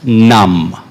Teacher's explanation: be very careful this time it's not a very English num it is a very Indian num you need to curl your tongue and spit it out the English num is a straight num it's not the numbness